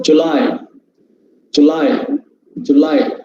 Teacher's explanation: the stressed part comes in the second syllable